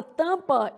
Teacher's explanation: Na palavra tampa, eu tenho a nasalização do A. Então, são 5 letras e 4 fonemas.